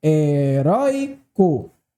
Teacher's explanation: Na letra A, heróico, ela é uma palavra paroxítona. Veja, heróico recaiu sobre a penúltima sílaba